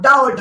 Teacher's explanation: आप डा और ढा बोलिए, आपकी जीभ उछाल मारती है, इसलिए उपक्षिप्त कहते हैं